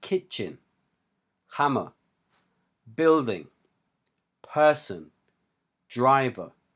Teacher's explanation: all of these words have two syllables and all of them have the stress on the first syllable